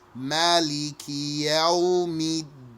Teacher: you say Maliki without extending the vowel